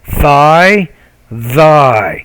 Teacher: We call these interdental consonants because the tongue is inserted in between the teeth when we produce those sounds.